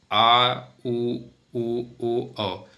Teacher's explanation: जीभ के पश्च भाग से उच्चारण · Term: पश्च स्वर